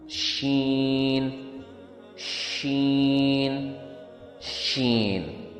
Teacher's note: شین کا ساؤنڈ ٹنگ کا مڈل سے پیلیٹ کے آس پاس نکلتا ہے اور یہ وائس لیس ساؤنڈ ہوتا ہے